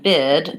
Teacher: in the word bid the voiced D makes this word longer